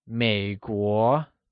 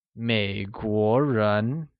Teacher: American people translates as 美国人, in which 美国 is pronounced with a falling rising tone on the E and a mid-rising tone on the O